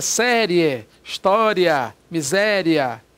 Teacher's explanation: a semivogal i vem antes da vogal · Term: ditongo crescente